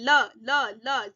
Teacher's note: जबान दांतों के पास लग रही है, दंते हो जाएगा, उच्चारण स्थान दंते है। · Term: पार्श्विक